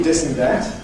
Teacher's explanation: You may get a plosive D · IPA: [d]